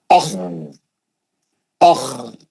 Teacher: کھردرا پڑھنا ہے، موٹا پڑھنا ہے کیونکہ مستعلیہ کا ہے، اوپری حلق سے پڑھنا ہے کیونکہ اس کا مخرج جو ہے، اس کا مخرج اوپری حلق ہے. اوپری حلق سے نکلنا آپ کا آواز، وہاں جنریٹ ہونا، وہاں سے خارج ہونا آپ کا آواز